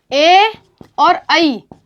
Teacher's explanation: ए और ऐ, इन 2 वर्णों का उच्चारण स्थान होगा कंठ तालु। क्योंकि ये संयुक्त वर्ण है, ये संयुक्त वर्ण बनते हैं अ या आ के बाद में ई होने पर ए बनता है, इसलिए इनका उच्चारण स्थान भी कंठ होगा।